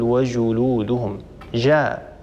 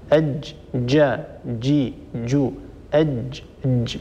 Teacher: جاء الجيم التي يجري معها الصوت هذه هذه ليست بجيم فصيحه الجيم الفصيحه هي جيم شديده اجا اجا اجا ينحب الصوتها هذه جيم فصيحه فانتبه لشده الجيم